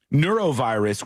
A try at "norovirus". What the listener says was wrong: Are you saying it right? Well, you were saying neurovirus, like it's like neuro, like in the brain.